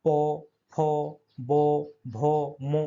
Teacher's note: ওষ্ঠবর্ণ, এগুলো ঠোঁটের স্পর্শ হয় উচ্চারণ করার সময়।